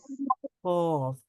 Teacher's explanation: জিহ্বার গোড়া তার বরাবর উপরের তালুর সঙ্গে লাগিয়ে উচ্চারিত হয় কফ